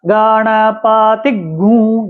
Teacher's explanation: आधा ग का उच्चारण करेंगे फिर ग में उ की मात्रा का उच्चारण करेंगे फिर अनुस्वार